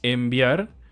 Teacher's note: la palabra enviar la escribimos con N y con b sin embargo se pronuncia con m porque la B obliga los labios a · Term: co articulación